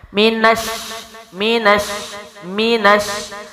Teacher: آگے میم ہونٹوں سے، نون منہ کے اگلے حصے سے، شین تشدید ہے تو نون کو شین میں داخل کریں گے، دو حروف کا ٹائم زور اور سختی سے پڑھیں گے